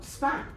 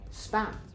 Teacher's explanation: If you say the word span, you should notice that the P sounds a bit more like, it sounds very much like a B.